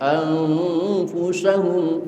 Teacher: Nun mati ketemu fa, ikhfa juga, namun ikhfa ausat. Suaranya suara M.